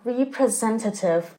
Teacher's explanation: This adjective is stressed on the third syllable and is pronounced as representative.